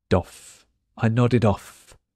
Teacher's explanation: the last letter D joins off